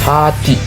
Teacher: Game game dalam bahasa Inggris huruf H. Pengucapan udara keluar bebas tanpa hambatan, tidak ada getaran.